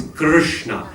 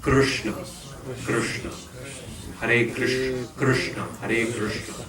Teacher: The sound is actually R. It's a vowel sound. So it's Krishna. Your tongue rolls from the K to the Sha over the R.